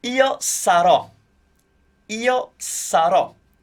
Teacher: Make sure that you put the stress on the sarò, on the ro part, because that's what makes it sound like a future to us.